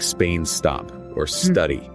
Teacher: remember in English we don't add an e sound before the S